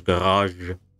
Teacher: the number three looking symbol is is a voiced hushed sibilant